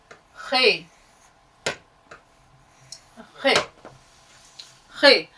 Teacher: तो देखिए खे जो है, ये जो अल्फाबेट आपने सीखा, इसमें थोड़ा सा आपको मेहनत करनी पड़ेगी इसके उच्चारण के लिए। खे, खे, बार बार बोलिएगा, खे, खे, खे, हलक से आवाज निकलनी चाहिए।